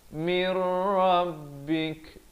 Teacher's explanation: Asalnya min rabbik jadi mir. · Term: idgham bila gunnah